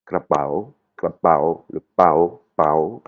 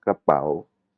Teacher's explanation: l'intonation elle est cassée